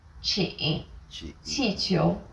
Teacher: Chi is like the CH in cheap, but again with a flatter tongue and a stronger puff of breath